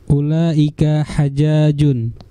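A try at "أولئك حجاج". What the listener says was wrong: hajun itu sama seperti tolibun, bentuk jamanya tulabun, sama seperti tajirun, tujarun. Hajun hujjajun, bukan hajjajun ya. Hujjajun.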